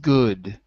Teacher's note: Take your finger, put it here on your throat, and when you say good, you can feel your vocal cords are moving. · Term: voiced